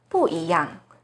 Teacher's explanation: Now the bu here is followed by a second tone, 一. So bu here should be the fourth tone,